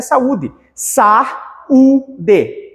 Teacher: o a e o u se separam nesse ponto nós temos um iato